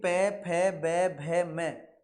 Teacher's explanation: पै फै बै भै मै आप इनका उच्चारण किसी भी कीमत पर बिना होठ मिलाए नहीं कर सकते हैं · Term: ओष्ठ्य वर्ग